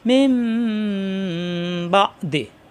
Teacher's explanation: নুন সাকিনের পরে বা আসলে এখানে মিম ধরে পড়তে হবে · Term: ইকলাব